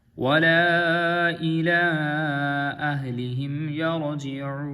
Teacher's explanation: مستعلیہ میں سے پور پڑا جائے گا، وَلَا إِلَىٰ أَهْلِهِمْ يَرْجِعُونَ، را کیونکہ را سے پہلے زبر ہے تو یہ بھی پور پڑا جائے گا